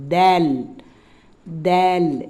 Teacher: நுனி நாக்கு அதிலிருந்து மேல் பல்லினுடைய மேல் பகுதி உள் மேல் பல்லினுடைய உள்பகுதியில டச் பண்ணி வரும்